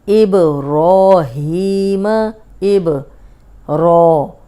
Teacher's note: अब रो पे खड़ी ज़बर है, मोटी भी होगी क्योंकि रो पे ज़बर या पेशो रा को मोटा पड़ा जाता है, और 2 हरकत लंबा करेंगे।